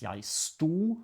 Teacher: You can write it with a D or without the D. In any case, you never pronounce the D.